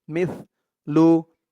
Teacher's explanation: সার আওয়াজটা কিন্তু একদম নরম হবে পাতলা হবে জিহ্বার মাথা উপরের দাঁতের মাথা আসতে লাগবে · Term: ছা